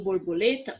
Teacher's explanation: quando eu falo borboleta, o lê eu falo mais forte, ou mais alto, tá bom? Então, lê é a sílaba tônica da palavra borboleta.